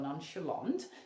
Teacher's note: The CH sound, sh, not chip.